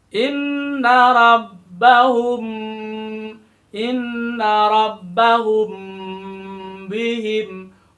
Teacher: humnya itu sepanjang 1,5 alif atau kira-kira 3 ketukan atau 3 harokat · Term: ikhfa syafawi